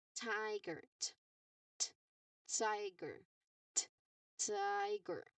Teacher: your throat must not vibrate for this sound because this is a voiceless sound